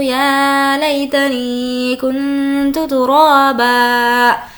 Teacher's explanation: نی کو کھینچ کر پڑھیں گے کیونکہ یا مدہ ہے اور یہاں پر غنہ ہوگا اس لیے نون کی آواز کو ناک میں چھپائیں گے اور 2 زبر میں سے 1 زبر ساقط ہو جائے گا.